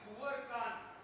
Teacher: જ્યારે અનુસ્વાર પર સ્વરભાર હોય ત્યારે એ દીર્ઘ થાય છે અને કાન કુંવરમાં એ કુ જ્યારે ઓછા સ્વરભારથી બોલાય છે ત્યારે એ લઘુ થાય છે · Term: કોમળ ઉચ્ચાર